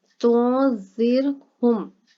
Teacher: را ساکن سے پیچھے زیر آ جائے تو را جو ہے وہ باریک پڑا جاتا ہے